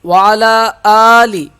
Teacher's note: حمزہ کو ایک الف کے برابر ہم کھینچ کے پڑھیں گے